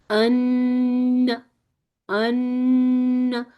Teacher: جو نون ساکن ہوتا ہے نا، نون میں فطری غنہ موجود ہے، اپنی زبان کو ثنایا الیہ کے لسا سے چپکا لیں.